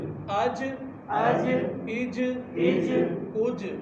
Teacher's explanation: جیم یہ حروف قلقلہ میں سے، اس کی وجہ سے یہاں تھوڑی سی حرکت پیدا ہوگی